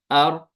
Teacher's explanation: रॉ का मखरज होता है, रसुल लिसान लगती है तालु के साथ। تو آر یہ اپنے مخرج کے ایگزیکٹ پوزیشن پہ نہیں رہتی ہے، پھر تھوڑا بہت ہی زبان ادھر ادھر ہلتی ہے، تو اس کو بولتے ہیں انحراف ہونا۔ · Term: इनहिराफ